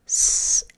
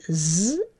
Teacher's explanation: is one's a motor on and one's a motor off so my tongue's in the same position my lips are in the same position to make this sound and the only difference is I'm turning the motor on for the z sound